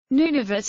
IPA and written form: ˈnuːnəˌvʊt (Nunavut)